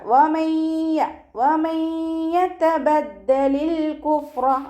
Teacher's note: നൂനിൻ്റെ സൗണ്ടിനെ യായിലേക്ക് ലയിപ്പിച്ചു കൊടുക്കുക